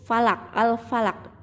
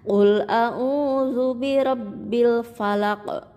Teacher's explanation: membacanya memantul itu namanya Qalqalah